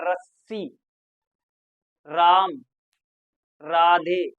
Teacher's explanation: जब रा बोलेंगे तो जीभ क्या होगी हमारी, कंपन करने लगेगी। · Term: प्रकंपित